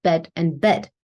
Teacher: the words bed and bad are going to be pronounced the same as bed and bed. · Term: merging vowels together